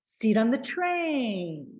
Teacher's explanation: Try that. So we have long, short, short, long.